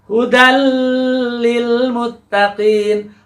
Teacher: Ketika disambungkan menjadi hudal, dal dan lam disatukan itu. Di siddah juga ya. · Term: idgham bila gunnah